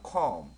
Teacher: 요거 같은 경우는 오 발음입니다. 사실은 오 발음과 어 발음의 중간 발음 정도 되는 것 같습니다